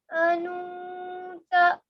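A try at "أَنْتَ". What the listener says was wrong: नहीं, अन अन अन अन की आवाज को, जो ना की आवाज आ रही है उसको नाक में रोके रखेंगे कुछ देर के लिए। तो उसमें देखिए ता भी था और जाल जाल भी था उसमें। नून साकिन के बाद या तनवीन के बाद दो जबर, दो जेर, दो पेश।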